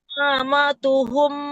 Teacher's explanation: Ma pertama tidak panjang, ma kedua yang panjang.